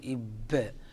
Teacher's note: أتبنون، هنا قلقلة الباء، فالباء يتصف ب6 صفات من بينها الشدة ومن بينها القلقلة، فهنا ينبغي أن نأتي في الباء بتلك الصفات الواردة فيه، كما ينبغي أن نخرج الباء من مخرجه، نقول إب، فيأتي الباء من بين الشفتين